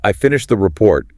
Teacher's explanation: the pitch falls dramatically on the word report and that signals the end of the thought. It's done. >> And conversely, rising intonation signals incompleteness or a question. · When you say, "I finished the report," the pitch falls dramatically on the word report, and that signals the end of the thought. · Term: Falling intonation, falling intonation